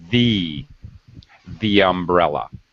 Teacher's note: we actually use a y sound as a kind of bridge to connect the two words so that they're very closely joined